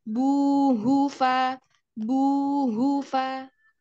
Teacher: Hunya tidak panjang, yang panjang bunya.